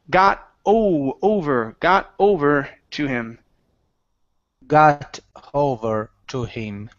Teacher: So instead of got hover, take out the H.